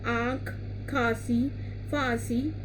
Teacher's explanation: जिस स्वर के उच्चारण में हवा मुख और नाक दोनों से बाहर निकलती है, वह ध्वनि अनुनासिक कहलाती है।